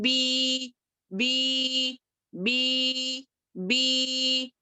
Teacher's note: دیکھیں یہاں پر کوئی بھی لیٹر آپ لکھ لیں، با ہے یہاں پر، با زیر بھی ہے، یا سکون کے ساتھ ہے، جزم کے ساتھ ہے، تو یہ ہو گیا یا یہ مدہ. یا ساکن سے پہلے کسرہ ہو، زیر ہو تو یا یہ مدیہ یعنی کہ یا ہو گیا، یا مدیہ ہو گیا. اب اس کو 2 حرکات کے برابر ہی کھینچیں گے، جیسے کہ با کسرہ یا سکون بی بی بی بی.